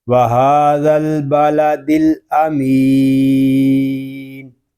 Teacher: یہاں مد عارض اس لیے ہو رہا ہے کہ یا مدہ کے بعد عارضی سکون آ گیا ہے، یعنی وقف کی وجہ سے ہم نے نون کو یہاں پہ ساکن کیا ہے